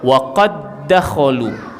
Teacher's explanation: Kita baca waqad dakhalu. Seolah-olah dal pertama tu tidak ada. Dan qalqalahnya tak adalah. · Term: idgham mutamasilain